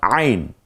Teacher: কণ্ঠনালীর মধ্যখান থেকে উচ্চারিত হয় আইন